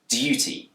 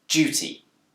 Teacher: In Britain, this word can be pronounced with a d sound, duty. But it's also commonly pronounced with a j sound, duty. This change from dir to j is called yod coalescence.